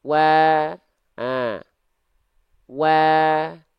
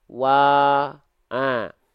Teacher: a berarti dia huruf tipis dilafalkannya bmss buka mulut sambil senyum buka mulutnya itu untuk menyempurnakan harakat fathahnya sambil senyum itu untuk menjaga kadar tipis dari vokal a-nya